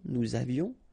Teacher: final S not pronounced, and then little liaison